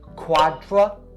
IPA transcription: ˌkwɑː-drə